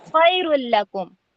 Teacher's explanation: لام اور را میں اظہار ہوتا ہے، غنہ نہیں ہوتا